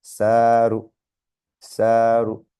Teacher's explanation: a and alif elongate, and then just a short u sound on the ra. So saru, saru.